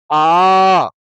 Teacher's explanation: दीर्घ यानी जितना समय इस अ को बोलने में लगा है, इससे 2 गुना समय इसको बोलने में लगेगा।